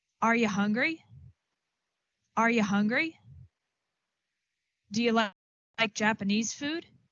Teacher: the reduction of you to ya